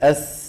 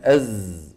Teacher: فالصفير هو شيء طبيعي في السين والصاد والزاي، سببه هذا المجرى الضيق